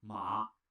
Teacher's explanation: Tone 3 first dips and then rises.